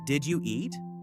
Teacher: With the voice going up at the end, that rising voice tells you it is a question. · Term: intonation